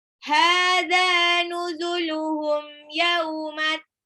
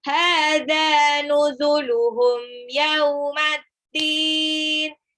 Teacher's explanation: Hadza, mad tabi'i 2 rakaat, dua-duanya mad tabi'i.